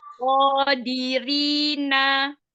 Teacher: Jadi nun itu ujung lidah ketemu dengan gusi atas. Nyandarnya di gusi atas.